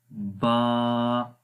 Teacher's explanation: با جو ہے وہ ہونٹوں کے تر حصے سے پڑھا جاتا ہے۔ تر حصہ جو اندر والی سائڈ کا ہوتا ہے، یہاں پر آپ دیکھ سکتے ہیں اس امیج کے اندر کہ یہ اندر والے جو ہونٹ ہیں یہ جب آپس میں ملیں گے تو یہ با کا مخرج ہے۔